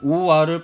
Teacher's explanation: 오, 아를 빨리 발음해 와로 소리 낼 수 있겠네요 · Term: 이중모음